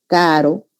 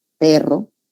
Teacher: simple y múltiple. Vibrante, el encuentro de los articuladores, ¿no?